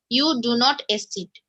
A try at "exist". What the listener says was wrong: Exist. Exit means to leave. That is EXIT, right? There's an S over here. Do you see it? So exit and exist are different.